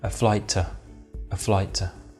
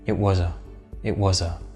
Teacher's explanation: we can say the words a and to very rapidly with schwa